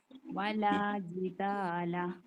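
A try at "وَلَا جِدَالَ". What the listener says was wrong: Okay, very good, very good, ബാറക്കല്ലാഹ്.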